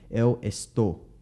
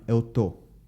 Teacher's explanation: Notice how the S was omitted.